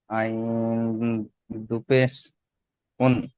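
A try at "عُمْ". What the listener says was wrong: আইন দুপেশটা হবে না, দুপেশটার জায়গায় মিম চলে আসছে, দুপেশটার জায়গায়, হ্যাঁ তানমিন, তো তানমিনের জায়গায় মিম চলে আসছে। তাহলে আইন মিম পেশ উম।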